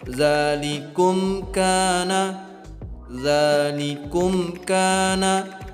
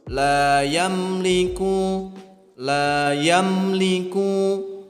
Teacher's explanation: Untuk cara membacanya dibaca dengan jelas, ya, tanpa didengung, dijelaskan. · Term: izhar syafawi